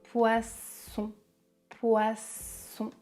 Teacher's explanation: le son est sourd comme un serpent